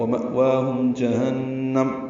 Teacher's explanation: ومأواہم میں مأوا میں حمزہ ساکن جھٹکے سے ادا ہوگا، وا کھڑا زبر 2 حرکات لمبا ہے، ہم میم ساکن پہ اظہار شفوی. جہنم نون مشدد پہ غنہ اور میم ساکن پہ اظہار ہے